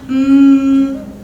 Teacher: So at any time, if I stop the air flow, if I plug my nose, I can't make this sound anymore. So I'm going /m/, I can't make that sound anymore, right? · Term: nasal sounds